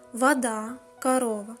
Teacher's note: Ненаголошене о вимовляється як а.